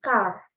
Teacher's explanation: R-nya itu nggak begitu terdengar dengan jelas ya, tipis gitu loh. Tapi kalau American tuh R-nya dia masih cukup bisa terdengar